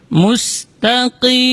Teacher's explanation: Itu ta-nya tipis. Kemudian huruf qaf dibaca dari aqsal lisan, di pangkal lidah